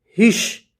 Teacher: Wa la ta ra ba ha ri, hish. हिश, अलिफ और लाम न पढ़ें, हा को सीधे शीन से जोड़ें